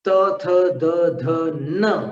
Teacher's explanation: त थ द ध न, अब न में आपको दांत के साथ में नासिका को मिलाना पड़ता है। न का उच्चारण दांत से भी करना होता है और नासिका से भी करना होता है।